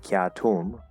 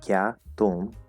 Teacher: I hear that there's a t, it's more of a t, like a dental T instead of t.